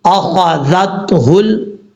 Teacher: ذال کو پر پڑھنے کی ضرورت نہیں ہے، یہ نارمل طریقے سے پڑھا جائے گا اور اس میں سیٹی بھی نہیں آئے گی. ذال کو تا سے کنیکٹ کریں گے.